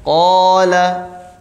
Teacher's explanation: Qala, jadi alifnya ya, bunyi huruf madnya, bunyi panjangnya itu juga menjadi tebal